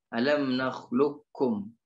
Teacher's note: tapi masuk dia qaf ke huruf kaf alam nakhluqkum ya masuknya qaf ke huruf kaf alam nakhluqkum seperti itu.